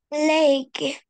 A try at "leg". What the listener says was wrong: yes, perfect.